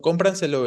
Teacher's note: Ahí no va el acento sobre pra, sino va sobre com.